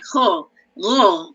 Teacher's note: pangkal lidah itu kita tekan kepada kita punya anak tekak